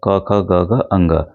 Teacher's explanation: कंठ से निकल रहा है